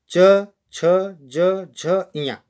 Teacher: हमारी जो जीभ होती है वह तालु को स्पर्श करती हुई इन शब्दों को बाहर निकालती है